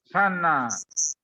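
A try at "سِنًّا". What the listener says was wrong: Sinan bukan sana. Sinan.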